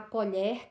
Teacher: nós vamos observar a colher, o som do E é aberto. Então, por isso essa diferença de pronúncia, mas a grafia a escrita é semelhante.